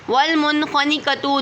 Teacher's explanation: نون ساکن کے بعد خوا آ رہا ہے تو اظہار ہو رہا ہے